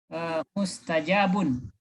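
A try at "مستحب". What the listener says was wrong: Mana ja? Nggak ada ja.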